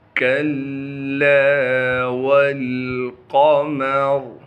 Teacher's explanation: قاف کو موٹا کر کے پڑھیں گے، قاف موٹے حروف میں سے ہے۔ · را کو وقف کی حالت میں موٹا کر کے پڑھیں گے اور جب وقف نہیں کریں گے پھر را کو باریک کر کے پڑھیں گے